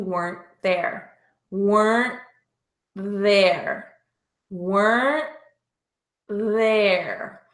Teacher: the ending T in weren't is not pronounced, but linked together with the TH in there.